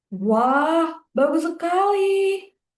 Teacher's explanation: It's slightly rising and then falling.